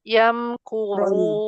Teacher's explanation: Roknya jangan melemah, tetap tebal.